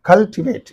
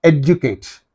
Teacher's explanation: the stress mark is used on the third syllable